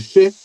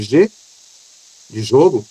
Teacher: Se fizer um som de X, não vibra. Mas se fizeram um som de G, de jogo, já vibra.